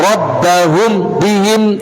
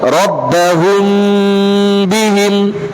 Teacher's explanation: Karena di situ adanya proses menyembunyikan mim. Mim itu disembunyikan ke ba. Namanya ikhfa, menyamarkan mim ke ba. huruf ba. Jadi tidak dibaca jelas mimnya, rabbahum bihim, tidak. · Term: ikhfa syafawi